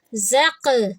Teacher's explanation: قاف پہ قلقلہ کریں گے کیونکہ قاف کے اوپر ہے سکون